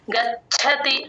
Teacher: చ కింద చ వత్తు మహాప్రాణం ఎప్పుడున్నా సరే అది మనం గాలి బయటకి వదిలితేనే ఆ చవత్తు వినిపిస్తుంది